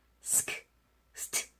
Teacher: fast, desk, soft는 무성음 처리를 확실하게 하셔야 돼요. st 이렇게.